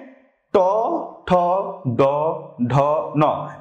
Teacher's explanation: আমাদের জীবাটা পুরাপুরি উল্টে গেছে টান টান বল টান টান দেখ জীবটা পুরাপুরি উল্টে উল্টে এখান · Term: মূর্ধা